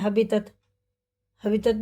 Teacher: توئیں اور تا کا ایک ہی مخرج ہے لیکن توئیں پر پڑھا جائے گا اور تا باریک پڑھا جائے گا